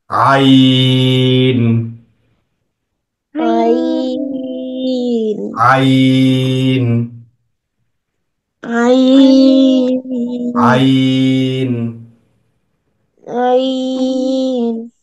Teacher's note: আইন কণ্ঠনালীর মাঝখান থেকে হায়ের মতো করে, হা যে জায়গা থেকে উচ্চারিত হয়েছে আইনটাও সেম জায়গা থেকে, তিন আলিফ টান।